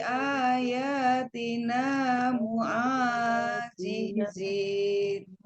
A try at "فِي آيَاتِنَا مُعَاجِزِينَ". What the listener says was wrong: Di sini fi panjang, alis ya. Alis fi-nya. Fi-nya tadi kurang panjang.